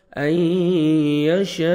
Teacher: نون ساکن کے بعد یا آ رہا ہے حروف یرملون میں سے ادغام کریں گے غنہ کے ساتھ